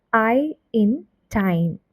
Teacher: A complex vowel sound that begins with one vowel quality and glides into another within the same syllable is called tifong.